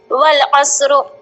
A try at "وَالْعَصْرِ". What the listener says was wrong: والے نہیں،